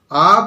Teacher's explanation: এ, আ অনেকটা নিচের দিকে। আ বললাম কেন্দ্রীয় অর্থাৎ মাঝখানে, কিন্তু নিচের দিকে আ।